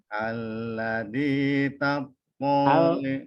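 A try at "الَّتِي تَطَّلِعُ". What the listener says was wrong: Allati bukan alazi. Allati huruf ta. Allati pendek. To pendek, tidak ada tanda panjangnya. Tattali'u. Tattali'u.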